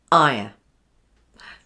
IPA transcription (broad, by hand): aɪə